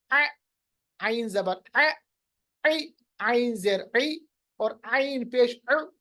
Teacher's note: वसतुल हलक में, यानी मिडल ऑफ द थ्रोट में, हमारे पास दो हरूफ है, एक है आइन, दूसरा है हा। आइन और हा pronounced from the middle part of the throat, दरमियानी हिस्से से अदा हो रहे हैं।